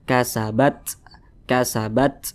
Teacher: cara membunyikannya itu ada desisan angin yang keluar daripada mulut kita